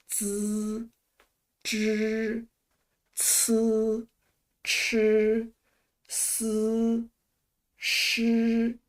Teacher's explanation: Let's take a look at the first group, zhi, chi, shi. This group of letters is known as the retroflex sounds. To pronounce these letters, we can first start with z, c, s, and then curl up our tongues backward slightly, like z, zhi, c, chi, s, shi.